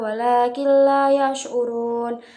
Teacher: Lalu pada kata walakilla itu terdapat hukum bacaan idgham bila gunnah yang cara bacanya lebur tanpa dengung, tanwin dihilangkan